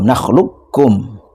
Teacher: Lah di sini garibnya terdapat pada lafaz nakhlukum. Jadi qofnya tidak diqqalqolahkan tapi langsung idgham · Tapi di lafadz ini langsung masuk diidghamkan pada kaf, qafnya tidak qalqalah